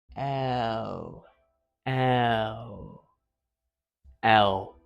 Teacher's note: The lateral releasing consonant where your tongue tip is going to touch your gum ridge and the phonation is going to come out the gaps at the sides. So you start in the and then put your tongue tip up like you're licking an ice cream, and it's going to sort of L, like that.